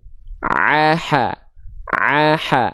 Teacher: Tumma liwasttihi fainun hau. Yang keluar dari bagian tengah tenggorokan ini ada dua. Huruf ain dan huruf ha atau huruf ha kecil ya.